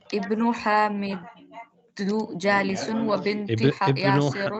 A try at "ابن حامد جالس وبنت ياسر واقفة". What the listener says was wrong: You read it Dhamma instead of Kasra.